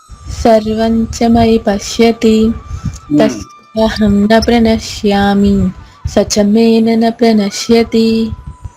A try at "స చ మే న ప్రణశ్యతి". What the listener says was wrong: 2 నాలు పెడుతున్నారు మళ్ళీ ఒక నానే.